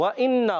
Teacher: واو کی ادا کی ہوتی ہے ہونٹوں کی گولائی سے